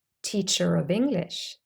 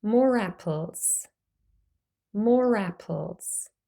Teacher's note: suddenly there is a r sound in there